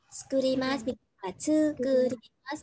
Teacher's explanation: khi mà có chữ là tsukurimasu, chữ đầu tiên á, mình sẽ vô thanh